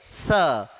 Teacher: स का उच्चारण दंत से, क्योंकि हम जब बोलते हैं स तो हल्की सी हमारी जीभ हमारे दांतों को छूती है।